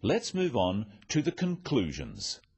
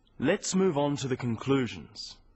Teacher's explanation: Stressing conclusions because it's the key word in this sentence. The other words stressed are the key words for understanding. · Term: sentence stress